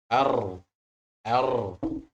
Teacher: seperti dua kali getarnya ada dua kali huruf ro